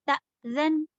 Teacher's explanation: हमज़ा पर सुकून लगा हो तो उसे झटका देकर पढ़ते हैं, यानी कि उसकी एक आवाज़ कट कर दी जाती है। जैसे त, ज़न, ये जो त को हमने झटके से रोक लिया, ये थी हमज़ा साकिन।